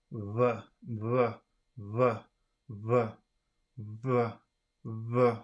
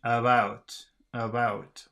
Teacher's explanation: it's produced by bringing the lips close to each other but not allowing them to touch so that the air passes through them with a slight friction noise